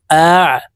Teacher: আইন হরফ হলকের মধ্যখান থেকে চাপ দিয়ে উচ্চারণ করব।